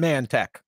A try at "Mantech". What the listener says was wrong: It's men tech, not man tech.